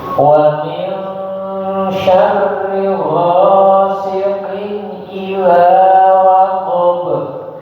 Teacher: syarri sama ghasikin langsung disambung